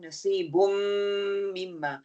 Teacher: always कामिल गुन्ना होगा with full गुन्ना इसको हम फिर 2 की गिनती तक होल्ड करके रखेंगे